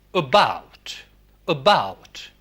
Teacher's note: English has central vowels also. The first one is very short, as in about, about.